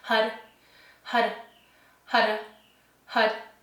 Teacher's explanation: And you'll notice that when you chant hud hud repetitively, the tip of your tongue does this little dance on the roof of your mouth behind your front teeth. So, your tip of your tongue will tap on the roof of your mouth behind your front teeth